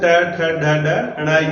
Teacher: ट, ट, ड, ड, ण, ये मूर्धन्य होते हैं। तो इसमें ट हमारा मूर्धन्य व्यंजन है।